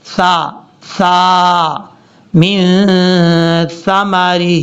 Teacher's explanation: ثا بغیر سیٹی کے ساتھ پڑھا جاتا ہے، اور اس کا مخرج ہے زبان کا سیرا اوپر والے جو 2 دانت ہیں ان کے اندرونی کنارے سے لگے تو ثا پڑھا جائے گا